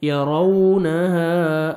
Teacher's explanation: كأنهم يوم يرونها، را کو موٹا کر کے پڑھیں گے اور لپس کو راؤنڈ میں لے کے جائیں گے